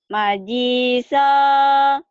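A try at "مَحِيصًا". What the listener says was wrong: Masa ini majiso? Kan ora titik, ora ada titiknya ini. Mahiso. Mahiso.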